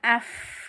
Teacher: Namanya hukum huruf mati, namanya bacaan hamas, dialirkan nafasnya af gitu ya.